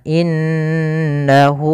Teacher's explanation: pada lafal inna ada bacaan gunnah, yaitu cara membacanya n-nya ditahan